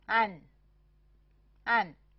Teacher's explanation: 这个音是开口符与▁n▁的合成音，发音的时候由开口符自然过渡到▁n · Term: 开口鼻音符